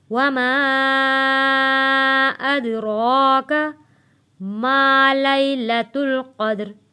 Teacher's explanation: वमा अदराका, वमा अदराका, दाल हरूफ़े कलकला है, आवाज़ वापस पलट कर आएगी। रॉ के ऊपर खड़ी ज़बर है, खींच कर पढ़ेंगे और रॉ को मोटा पढ़ेंगे।